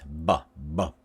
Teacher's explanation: with B, we see here the lips are closed. Bilabial stop. And we see the teeth are open.